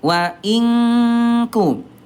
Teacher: Nun ada di ujung lidah, kaf ada di pangkal lidah. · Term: ikhfa abad